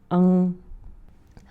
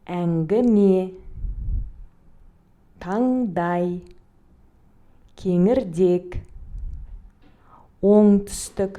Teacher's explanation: Он является носовым сонорным. Обратите внимание, когда произносится звук «н», кончик языка опускается к нижним зубам.